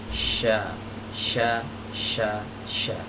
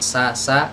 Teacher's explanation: Dia mendekat ke arah langit-langit. Dan huruf shin ini memiliki sifat yang namanya tafashi, yaitu desisnya itu menyebar ya ke dinding-dinding bagian dalam mulut kita